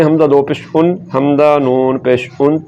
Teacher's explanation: तो तनवीन के बाद नून साकिन की तरह ही निकल रही है।